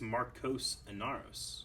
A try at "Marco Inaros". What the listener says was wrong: No, it's Marco Inaros. There's no S.